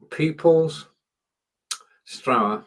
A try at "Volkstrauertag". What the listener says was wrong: no, it's not Trauer. The S is there to combine those 2 words so that you can pronounce it as one word. So you've got Volk, you've got Trauer and Tag, and the S is purely there so that you can actually pronounce it as one word. Otherwise, you're taking a breather. And then that would make it 2 words, and it isn't, it's 1 word.